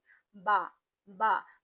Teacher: यानी जब हमने बा पढ़ा था तो बा में हवा खारिज नहीं हो रही। बा बस दो होठ आपस में मिल रहे हैं। हवा खारिज नहीं हो रही। सांस बाहर नहीं आ रही।